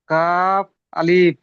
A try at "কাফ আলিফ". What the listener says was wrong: আলিফ টান হবে না, কাফ আলিফ।